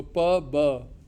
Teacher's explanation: b is a voiced version of p. You're saying p, but you have added some voicing into it.